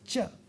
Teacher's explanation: a palatal non-aspirated and non-voiced sound, it's just going to be one sound, which is ch.